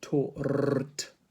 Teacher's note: If the R is not word initial, it's merely vestigial in RP pronunciation.